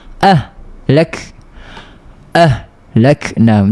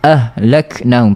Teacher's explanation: Lazim juga daripada mengalirnya sifat huruf ha ni dia tak boleh terputus suara.